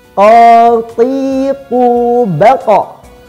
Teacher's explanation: Karena huruf qaf bukan huruf bibir, melainkan huruf lisan atau huruf lidah. Jadi penyebutannya tidak perlu disertakan bibir ke depan.